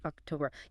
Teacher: It sort of goes up and then comes back down.